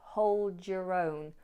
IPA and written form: həʊld jər əʊn (Giữ riêng)